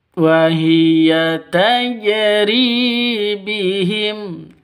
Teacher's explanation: Ri panjang dua ketukan karena ada ya mati diawali dengan kasrah mad asli atau mad thabi'i.